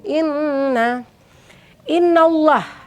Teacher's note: Inna, nah inna di sini adalah wajibul gunnah atau ada juga yang menyebutkan tajibul gunnah. Itu ada nun tasydid dibacanya berdengung.